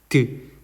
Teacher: 드 할 때 혀끝이 잇몸 끝에 닿습니다. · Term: 잇몸 소리